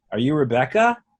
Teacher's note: a yes or no question, I'd say, are you Rebecca? And there'd be a raise at the end.